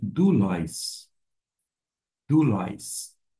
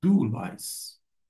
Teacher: Mas acontece que quando ela se encontra desta maneira, ou seja, junta, vai formar um ditongo. E a pronúncia não vai ser oi, e sim u.